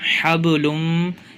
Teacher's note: لام کو میم سے ملا دیں گے